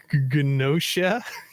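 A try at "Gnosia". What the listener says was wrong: I think the G is silent.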